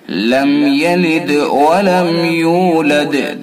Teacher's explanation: دال کے اندر قلقلہ کیا جائے گا چونکہ ساکن ہے۔ ولم یولد، ولم یولد، میم کے اندر اظہار کریں گے چونکہ میم ساکن ہے، اس کے بعد یا ہے۔